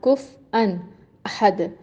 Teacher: جیسے ہم اس کو کفواً احد پڑھتے ہیں، ایک اور طریقہ ہے جس میں اس کو کف ان احد پڑھا جاتا ہے، کف کے بعد رکتے ہیں اور پھر ان